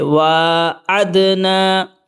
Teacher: وَإِذْ و، عین دال زبر عد، نون الف زبر نا، وَعَدْنَا، دال کے اوپر جسم ہے تو قلقلہ کریں گے، ملاتے وقت ڈبل آواز نکالیں گے